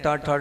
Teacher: ध्यान रखना जीभ को पीछे टच करते हैं ट ठ ड ना आगे नहीं पीछे मोड़ कर ले जाकर